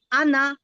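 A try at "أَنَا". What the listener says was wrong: আনা টানা যাবে না। হ্যাঁ, আনা কি টানতে মানা, মনে রাখবেন, আনা মানে টানতে মানা, এটা মনে রাখবেন। আনা টানা মানা।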